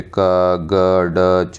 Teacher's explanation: कम मात्रा में आती है, मतलब अगर मुख से उच्चारण कर रहे हैं वायु कम मात्रा में बाहर आई तो अल्पप्राण हो गए